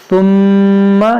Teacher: میم میں غنہ کریں گے، میم مشدد ہے